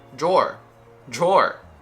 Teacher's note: it's a dr combination which gives us a little j